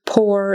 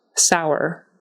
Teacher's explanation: Put these two here because they are spelled, both of them with an OUR on the end, but as you can hear, we pronounce them differently. Pour is pronounced as if it was just an OR, and sour is pronounced as if it were a OWER kind of thing. So pour, sour.